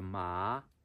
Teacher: So you start with like a middle kind of middle level pitch frequency, and then you go up